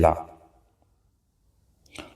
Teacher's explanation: जिनका उच्चारण करते समय जीभ का अग्र भाग बीच में स्पर्श करे हवा पारश्वों से संघर्ष करते हुए निकले उसे पार्श्विक व्यंजन कहते हैं।